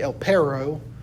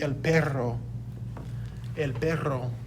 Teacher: a double r requires a tongue roll